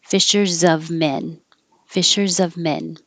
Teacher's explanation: this s sounds like a z and will connect to the O